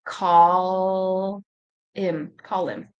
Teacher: Again, we're going to get rid of the h.